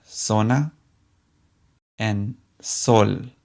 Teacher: both the Z and the s in Spanish sound just like the English s